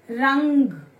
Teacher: अनुस्वार की जो उच्चारण है वो नाक से आता है।